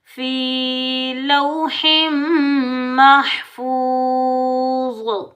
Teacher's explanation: واو ساکن سے پہلے پیش آ رہا ہے، یہ ہے واو مدہ، اس کو ہم 1 الف کی مقدار میں کھینچ کر ادا کریں گے